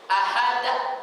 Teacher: kesalahan ini terjadi karena menutup tenggorokan pada makhraj Hamzah setelah pucapan huruf Qalqalah